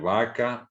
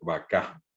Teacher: En castellano, vaca es una palabra llana y en guaraní es una palabra aguda, vaca. O yo digo caballo, palabra llana, y en guaraní caballo, el acento agudo.